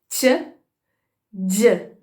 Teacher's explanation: Semelhante a essas duas, a gente tem as africadas, né? Que vem da combinação de uma oclusiva alveolar com a fricativa pós-alveolar.